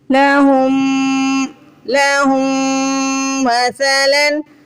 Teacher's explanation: ہا کو میم سے ملاتے وقت غنہ کریں گے. غنہ مطلب ناک میں آواز لے کے جانا، تھوڑا کھینچ کے ادا کرنا. لَهُمْ مَثَلًا، سا کو سوفٹلی ادا کرنا ہے.